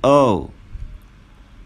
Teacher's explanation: The lips are completely relaxed. They are slightly parted. And the tongue is relaxed. And it's in the middle of the mouth. Or it's in a middle position.